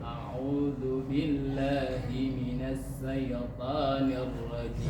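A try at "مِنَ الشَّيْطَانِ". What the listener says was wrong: Masih huruf sa. A'udzu billahi minasya. Punya sifat tafasyi namanya. Tafasyi itu apa? Menyebarkan desis. Kalau desisnya kecil, huruf sa itu bukan tafasyi namanya. Himinasyaiqo.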